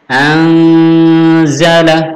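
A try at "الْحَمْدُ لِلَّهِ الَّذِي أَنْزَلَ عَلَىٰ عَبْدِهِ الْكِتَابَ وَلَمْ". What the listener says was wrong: lanya pendek.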